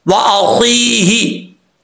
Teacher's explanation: हमने या को लंबा करना है और हा को लंबा नहीं करना। अक्सर लोग पढ़ देते हैं वाखी, ये बहुत बड़ी मिस्टेक है, गलती है, ये ठीक करनी है आपने।